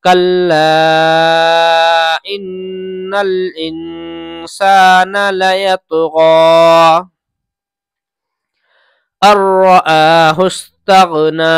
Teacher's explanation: حمزہ را زبر ار پڑھا جائے گا، نون نہیں پڑھا جائے گا، حمزہ کے بعد ڈائریکٹ را پڑھی جائے گی · کلا پہ مد ہے، اس کو زیادہ کھینچیں گے